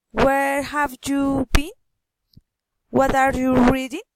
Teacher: Friendly interest, politeness, rising intonation.